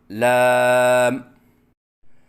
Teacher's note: آخر میں میم کے اوپر قلقلہ کرنا، جیسے لام، یہ غلط ہے